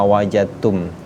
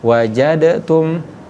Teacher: Ketika huruf da sukun ketemu dengan huruf yang sama, ta yang sama tempat keluar hurufnya, maka ini dinamakan idgham mutajanisain nih. Sama tempat keluar hurufnya, tetapi sifat dari huruf ini berbeda. Maka sifat dari huruf qalqalanya dihilangkan.